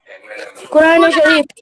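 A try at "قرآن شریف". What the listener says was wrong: कुरान ए शरीफ बोलना है, ठीक है? कुरान is right but कुरान ए शरीफ.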